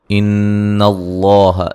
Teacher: نون مشدد پہ غنہ ضروری ہے، لفظ اللہ کو موٹا ادا کریں گے۔